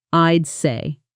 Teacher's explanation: how naturally the host connects I'd say into almost one syllable